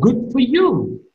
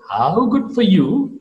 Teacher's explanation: how good for you? Good is to be marked with rising falling tone.